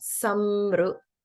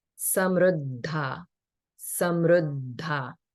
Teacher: This ru is a vowel, so there's no holding here. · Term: the R vowel